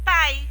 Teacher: Então, o I, ele, nesse caso de pai, o I é semivogal porque está do lado da vogal A.